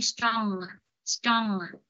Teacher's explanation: để cho cái hơi mình nó lên mũi và nó thoát ra lỗ mũi nó xuống dưới á, thì mới đúng, nó gọi là nasal sound, tức là âm mũi.